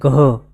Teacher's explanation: ગ પ્લસ પ્રાણ પૂરો તો બનશે ઘ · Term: મહાપ્રાણ